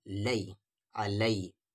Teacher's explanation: یا ساکن سے پہلے زبر ہے تو لئی ساؤنڈ